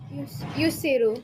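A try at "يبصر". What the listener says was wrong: Well, you said yus, which means you started with this guy. Yub siru.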